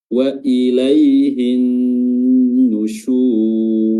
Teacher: alif lam syamsiyah, di mana diidghamkan lamnya langsung masuk ke nun